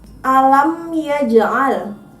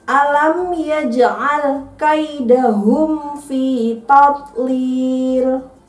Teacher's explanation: Ada di huruf jim, itu harus dipantulkan karena ada bacaan qalqalah.